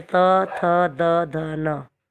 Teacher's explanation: इसी प्रकार त वर्ग के, ये दांत से टकराएगी हमारी जीभ